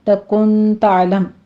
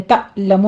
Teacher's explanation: عین کو وسط حلق میں لے جا کے سٹاپ کرنا ہے